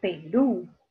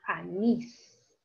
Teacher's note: en la última, o en el último lugar, o en la última sílaba está la mayor fuerza de voz. Ahí está la sílaba tónica.